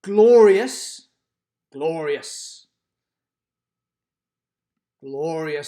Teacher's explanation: glorious glorious glorious stresses the first syllable